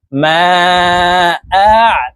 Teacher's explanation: আইন হরফকে হলকের মধ্যখান থেকে চাপ দিয়ে উচ্চারণ করব, কারণ আইনের মাখরাজ হলকের মধ্যখান থেকে হবে।